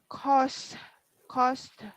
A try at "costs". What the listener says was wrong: That is S. Costs. It's not Costa or Costas. It's costs. Costs. Costs.